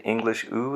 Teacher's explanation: the English who is not quite as far back and not quite as close to the roof of the mouth as the extreme ooh that could be made in the same quadrant you see a